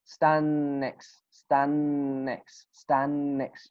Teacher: you can say what stand next stand next because there's some most of the time t at the end will not be pronounced